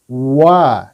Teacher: Waw itu tempat keluarnya adalah dari bibir, ya. Bibir yang dibulatkan, ya. Bibirnya membulat. Wa. Jadi ketika kita mengucapkan huruf wa, sudah dibulatkan dulu. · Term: huruf waw